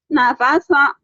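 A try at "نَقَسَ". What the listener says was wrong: Napaso. Itu titiknya 2. Nakoso. Nakoso.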